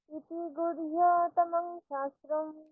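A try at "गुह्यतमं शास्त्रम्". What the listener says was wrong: গুর নয়, রকার নেই ওখানে, গুহ্য।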